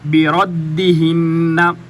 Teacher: را موٹا ہے تو را کے اوپر زبر ہے تو یہ موٹا ہوتا ہے، اگر زیر یا پیش آئے تو پھر یہ باریک ہوتے ہیں، یہاں پر زبر ہے تو را موٹا ہوگا۔